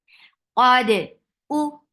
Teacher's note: Fatha upon jaws attached with dal. Dal with dal is light, and it will get qalqala.